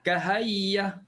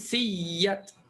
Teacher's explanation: Bila dah tukar bermakna ada dua ya, bermakna ada dua waw, maka ya pertama masuk dalam ya yang kedua ataupun waw pertama masuk dalam waw yang kedua. Berlaku idgham, maka bacaannya bertasydid. Bacaannya akan berlaku kita menekan tu.